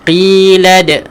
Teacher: Qi dua harakat, tebalkan huruf qaf.